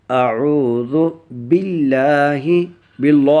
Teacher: اگر لفظ اللہ کا لام اور اس سے پہلے حرف کے نیچے زیر آ جائے، جیسے اعوذ باللہ میں ہے تو وہ لام باریک پڑھا جائے گا، یعنی لفظ اللہ باریک پڑھا جائے گا۔